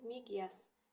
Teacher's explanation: Y cinciltilidir. Cinciltili olduğuna görə bu q dəyişilmir. Tələffüzdə olduğu kimi miqyas şəklində tələffüz olunur.